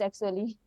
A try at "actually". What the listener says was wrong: Again, actually missing that ch sound. So the ch sound is a problem, the j sound is a problem too, and the sound is a problem.